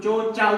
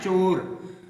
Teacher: अब इसको इस तरह या ध्यान रखना है, डिफरेंस क्या करना है आपने, डिफरेंस ये करना है कि जैसे ये चो है, हम चो को चो ही बोलेंगे, लेकिन जब हमारी औ की बात आती है तो हम उसको चाव पढ़ते हैं, जबकि ये चाव होता नहीं है, ये होता है चो चौ, चो चौ, चो चौ होता है ये, तभी आपका सही उच्चारण इसका हो पाएगा।